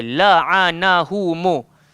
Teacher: Kadang-kadang bila kita terlalu laju sangat, kadang-kadang hilang lam, kadang-kadang hilang ain.